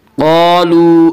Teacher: قالوا، الف مدہ، الف ہمیشہ مدہ ہوتا ہے، الف سے پہلے زبر ہوتا ہے، الف مدہ کو 1 الف کے برابر کھینچ کر پڑھیں گے